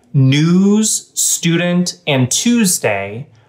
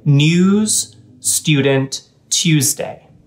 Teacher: Traditionally, these words were said differently based on whether you are American or Canadian, where it used to be that Americans would say the highlighted letters with more of an oo sound, whereas traditionally, Canadians would say these vowels with more of a u sound. So what that means is that Americans would say news, student, and Tuesday, whereas some Canadians would often say news, student, Tuesday.